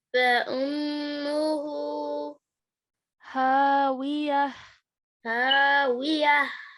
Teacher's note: meme mushaddad, so a meme ghunna sound, and ending the verse with a ha sakin sound